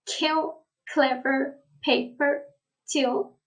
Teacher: they will be aspirated first in a stressed syllable and initial position